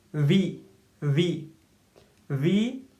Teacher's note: So V is a labio-dental sound. So means this upper teeth and lower lips are used here.